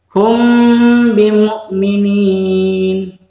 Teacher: Jadi hum jangan terlalu panjang. Itu cukup 2 harokat atau 2 ketukan. Itu 2 harokat atau 1 alif. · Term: ikhfa syafawi